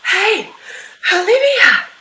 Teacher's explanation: we whisper with an aspirate exhale